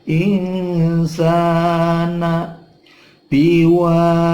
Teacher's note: wa fathah diikuti alif, panjangnya dua ketuk, mad tabi'i